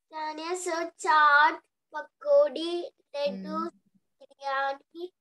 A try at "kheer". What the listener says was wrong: Kheer, not keer. Kheer, K-H.